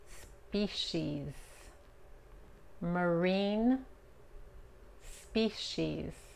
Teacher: La C-I en esta palabra se pronuncia como la S-H.